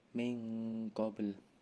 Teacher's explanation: ada huruf ikhfa karena nun sukun bertemu huruf qaf. Lalu ada qalqalah sugro karena terdapat huruf qalqalah ba.